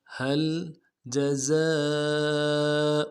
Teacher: آنی ہوگا۔ هل جزاء جیم کو نرم سے ادا کرنا ہے، زا کو سیٹی ہوگی، سیٹی واضح کریں گے